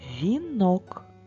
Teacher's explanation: наголос слові вінок падає на звук о